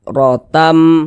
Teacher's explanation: membacanya dengan cara memasukkan kemudian disertai dengan ghunah yang dimasukkan itu bunyi tanwinnya dimasukkan ke huruf mim melebur dia ke huruf Mim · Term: idgham Bi ghunah, idgham bi gunnah